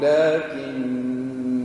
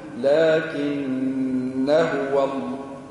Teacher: إذا نقف عليها نقول لكن، نثبت المد، لكن كنواصل نحف المد